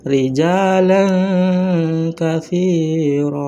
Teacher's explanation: nun sukun maupun tanwin masih tetap terdengar tetapi samar-samar iz antara izhar dan idgam. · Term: ikhfa syafawi